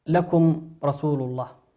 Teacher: الميم ساكنة وأتى بعدها حرف الراء، والراء من حروف الإظهار